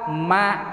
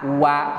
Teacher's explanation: waw teh sami duanana tina biwir dua ma ngan bedana teh ari mim mah biwirna rapet antel ari waw mah biwirna molo maksudna molong biwir teh lain biwir molong tapi antara nu luhur